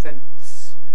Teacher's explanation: people pronounce them fence intruding if you like a t between the n and the s · between a nasal and a voiceless fricative you get a plosive agreeing in place with the nasal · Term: epenthetic T